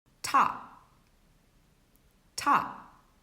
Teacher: notice that i didn't say top top my mouth is ending closed · if it's at the end of a word we don't aspirate so there's no puff of air for example top top notice that i didn't say top top · It's an aspirated sound, meaning there is a puff of air, like in the word puff, puff. But if it's at the end of a word, we don't aspirate, so there's no puff of air